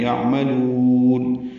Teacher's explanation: مدہ ہے، نو واو مدہ ہیں، 2 حرکات لمبا کریں گے، یعملون عین ساکن پہ اظہار ہے، میم کو جلدی ادا کرنا ہے، لام کو لمبا کرنا ہے